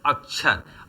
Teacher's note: अक्षर शब्द के उच्चारण में जिस ध्वनि पर सबसे अधिक बल दिया जाता है वह क ध्वनि है। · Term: ध्वनि बलाघात